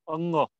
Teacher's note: ये कंठ है, कंठ, कंठ से बोला जाता है, इसका गले से इसका उच्चारण होता है